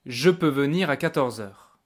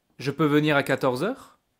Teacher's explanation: you can hear obviously that the tone of my voice is going up at the end of the question.